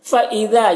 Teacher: فَإِذَا، یہاں پر الف کے نیچے زیر ہے تو اسے ای حمزہ پڑھنا ہے، اور یہاں پر الف مدہ ہے، ایک الف کے برابر کھینچیں گے